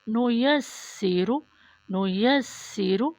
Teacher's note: سین میں سیٹی کی آواز آئے دونوں دانتوں کے درمیان سے